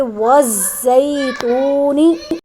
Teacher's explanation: یہاں واو مدہ ہے، ایک الف کے برابر لمبا کریں گے